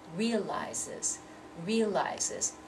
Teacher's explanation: That Z sound. So now instead of realize, which is two syllables, we have to say it as if it's three syllables.